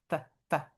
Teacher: by touching our teeth to our lip